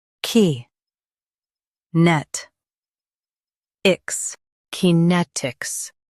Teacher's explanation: Stress net and keep ix soft.